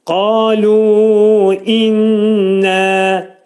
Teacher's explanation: Qalu inna, idğam mə'al gunnə, nun sıxılacaq burunda 2 saniyə və 2 səs qədər də qaldırılacaq.